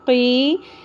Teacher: قاف کی زیر کے ساتھ یا مدہ آ گیا جس کو ہم ایک الف کے برابر کھینچیں گے